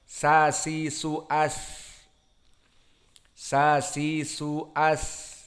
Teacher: makhrajnya torful lisan ma'a ma fauqa as-sanaya as-sufla, di atas dari gigi seri yang bawah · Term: makhraj sin